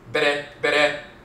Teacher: But BR, BR with the rolling R, the tongue tapping the roof of the mouth once